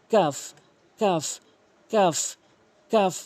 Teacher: কাফ উচ্চারণ হয় জিহ্বার গোড়া হতে একটু আগে বাড়াইয়া উপরে তালুর সঙ্গে